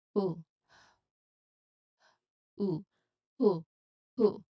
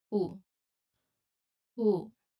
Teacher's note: you should emphasize the clear H sound at the beginning. So who, that's the H sound, right? Like you are blowing out air. So and then you add oo sound, oo, and then you blend them naturally.